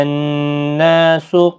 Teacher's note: نون مشدد پر غنہ ہوگا، کھینچا بھی جائے گا 1 الف کی مقدار کے برابر